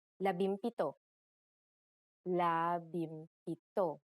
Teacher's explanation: If a P follows the NG connector, the NG becomes an M just like in 17.